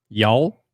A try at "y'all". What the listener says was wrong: You didn't really have it. Did you have a W in there? Was that a solid y'all? There is no W on there. W's a slow letter. W's a slow letter.